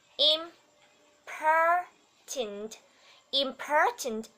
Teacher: important, trọng âm rơi vào âm thứ hai